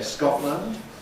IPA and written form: ˈskɒʔlənd (Scotland)